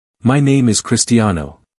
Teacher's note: There's no rise, no sharp dip, just a steady, level tone.